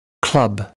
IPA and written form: klʌb (club)